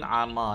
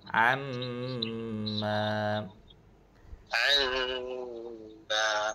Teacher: Dia ibaratkan mim tu ada dua kalilah. Ada dua huruf mim tu. · Okey dia kena dengung. dalam kadar dua harakat.